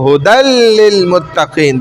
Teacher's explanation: دال کو لام میں داخل کر دیا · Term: ادغام